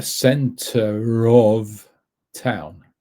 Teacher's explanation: center leads with an r into of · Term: liaison